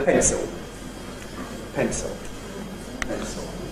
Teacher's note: [t] is added between [n] and [s] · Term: epenthesis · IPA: [ˈpentso]